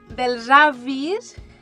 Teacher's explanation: la S és sonora perquè darrere hi ha una vocal.